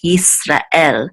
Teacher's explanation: in Hebrew, they're much more distinct, these two syllables